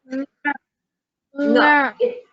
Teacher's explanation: It is like ka, but it has a nasal sound. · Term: ngakara